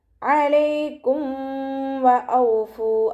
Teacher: ഇവിടെയും മീം സാക്കിനിയുടെ നിയമത്തിലുള്ള ഇദ്ഹാറാണ് വരുന്നത്. മീം സാക്കിനിയെ വ്യക്തമാക്കി മണിക്കാതെ ഓതിക്കൊടുക്കുക